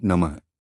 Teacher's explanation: अंत में विसर्ग अह के कारण हल्की ह की ध्वनि आनी